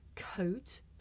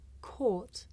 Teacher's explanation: difference between the diphthong oh and the long vowel